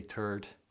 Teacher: excuse my Irishness, you know, not pronouncing the H, the TH.